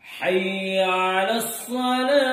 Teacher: اب دوسرے جملے میں اوپر سے نیچے کو آہستہ آہستہ آواز لائیں گے اور حیا کی یا کو بالکل بھی نہیں کھینچیں گے. عموماً دیکھا گیا ہے کہ دوسرے جملے میں حیا کی یا کو بہت زیادہ کھینچتے ہیں.